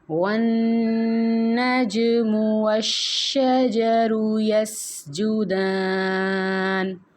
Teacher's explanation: نون مشدد یعنی کہ غنہ، یعنی کہ ناک میں 1 سیکنڈ تک ہم اس کی آواز روکیں گے۔ جیم ساکن پہ قلقلہ ہوگا، یعنی کہ مخرج کو تھوڑا سا حرکت دیں گے اور ایکو پروڈیوس کریں گے